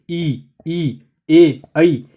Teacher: देखिए ई ए ऐ, ये क्या होते हैं आपके री, ये आपके अग्र भाग में होते हैं, ठीक है, आगे से निकलते हैं, जीभ के आगे के भाग से बोले जाते हैं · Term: अग्र स्वर